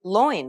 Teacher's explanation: A dip thong refers to two vowel sounds that are pronounced within the same syllable